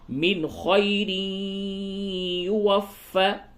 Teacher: نون ساکن کے بعد خا ہے، اظہار ہوگا